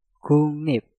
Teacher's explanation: Nah, ingat apabila kalian melihat kata yang diakhiri dengan giok, setelah itu suku kata di depannya diawali real, yang pertama gioknya dirubah menjadi suara nyeng, dan realnya kita rubah menjadi suara nien